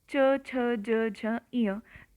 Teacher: आपकी जो जीभ है वह आपके तालव्य को टच करेगी